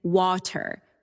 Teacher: in standard American water with a clear R. In some British accents, water, the R is dropped.